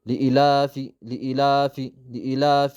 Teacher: ሐምዛዋ ሁለት ሐረካ ያክል መሳብ አለበት። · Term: መዱል በደል